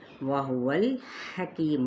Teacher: الحا وسط خلق سے ادا کریں